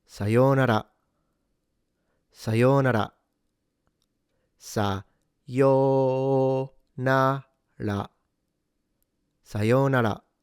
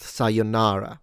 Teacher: Alright, so the first thing you're noticing is that it's not pronounced sayonara. So no stress on na. In fact, no stress anywhere. Each syllable, or mora, should be the same length